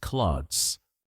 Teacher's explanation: Yes, the th is almost silent.